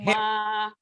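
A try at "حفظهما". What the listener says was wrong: Bukan ip. Hip. Hip.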